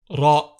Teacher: The letter Ra sounds like the Spanish rolled R. However, it is a slight roll and barely noticeable.